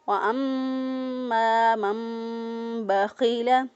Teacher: وَأَمَّا میم مشدد پر ہمیشہ گنہ ہوتا ہے، گنہ کرتے ہوئے میم کو ادا کیا، الف مدہ، الف پہلے والا حرف پر زبر، ایک الف کے برابر لمبا کیا، من بخیل، من بخیل، نون ساکن کے بعد دیکھیں با آ گیا تو یہاں پر اقلاب ہو رہا ہے، نون ساکن کے بعد جب با آ جائے تو نون کو میم سے بدل کر پڑھتے ہیں، تو ہم اس کو پڑھیں گے وَأَمَّا مَن بَخِيلَ.